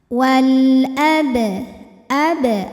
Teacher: dibunyikan dengan jelas Wal ab ab ada hukum Qalqalah Sugra sebab huruf ba ini qalqalahnya sukunnya asli ya dan ada di tengah bacaan cara bacanya ba dipantulkan dengan pantulan yang kecil · alif lam menghadapi huruf qamariah yaitu Hamzah maka lam sukun dibunyikan dengan jelas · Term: alif lam qamariah, qalqalah sughra